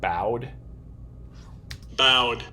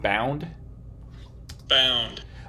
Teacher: The vowel is nasalized. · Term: nasalization of vowels